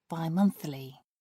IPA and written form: baɪˈmʌnθlɪ (bimonthly)